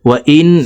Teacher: এখান থেকে বলছি দেখুন, قالوا ادع لنا ربك يبين لنا ما هي إن البقرة تشابه علينا وإنا إن شاء الله ওয়াইন, এখানে ওয়াজিব গুন্না 3 সেকেন্ড পরিমাণ গুন্নাহ করে পড়ব, কারণ হরকতের বামে নুনের উপরে তাসদিদ আছে, এই কারণে জেরওয়ালা হামজাটি তাসদিদওয়ালা নুনের সাথে 3 সেকেন্ড পরিমাণ গুন্নাহ করে পড়তে হবে।